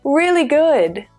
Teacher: Both words are stressed equally.